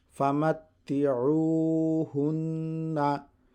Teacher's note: U, Famatti'u, Hanun Pesh Hun, Famatti'uhun, Nun Zabar Na, Famatti'uhunna. Remember, there is Nun Mushaddad. So hold your sound for 1 second and make nasal sound.